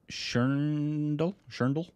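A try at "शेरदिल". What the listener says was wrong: There's no N, it's just Sherdil. Or Sherdil. You added an N. Sherdil.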